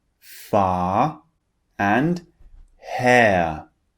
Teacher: when the r comes at the end of a word we do not pronounce it · at the end of a word we do not pronounce it so when the r is at the end it just turns into a long vowel sound in these two examples we have far and hair can you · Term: British English